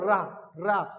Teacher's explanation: कंपन जात, कंपन हो, जीभ का आगे से मुड़ना और लड़खड़ाती है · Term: प्रकंपित व्यंजन